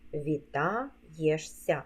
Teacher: а голосний буква є Після голосного позначає два звуки й е дві букви ш с - це м'який подовжений звук с